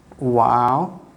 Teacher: your lip shape will be rounded